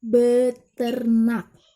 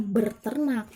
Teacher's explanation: Contohnya, ber ditambah ternak menjadi beternak karena terjadi pelesapan fonem R pada prefiks ber. Jadi bukan berternak, tetapi yang benar itu adalah beternak.